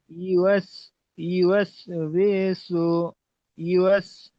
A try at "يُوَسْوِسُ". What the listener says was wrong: বি টান হয়ে যাচ্ছে, ইউওয়াসবিসু, ইউওয়াসবিসু।